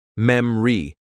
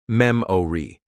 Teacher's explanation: Memory is pronounced memri instead of memori.